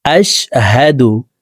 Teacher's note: এখানে হা জবর হা, হার উচ্চারণ হলকের শুরু থেকেই পড়ব। আশহাদু, আশহাদু বলা যাবে না।